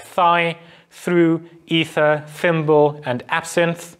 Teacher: this is called either an interdental fricative or it is called an alveolo dental fricative because your tongue sort of goes between the alveolar ridge and the teeth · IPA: [θ]